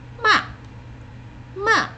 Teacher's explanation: the fourth tone is the most fun. It's the angry tone. It starts high and it goes like that.